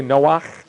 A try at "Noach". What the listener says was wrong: Noach. Sounds like someone's trying to hop something.